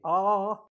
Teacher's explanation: it's an open vowel because the mouth is open and the tongue is low